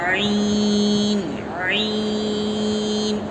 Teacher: عین حلق جو ہے وہاں کا درمیانی حصہ، بیچ حصہ سے عین نکلتا ہے، عین کو اچھی طرح اندر سے نکالنا ہے، عین عین۔